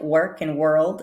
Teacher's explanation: here are some words where we see the r after vowel but really it has to be a strong r sound · we are really transitioning straight from one consonant sound into the R sound with a quick, tiny schwa in the middle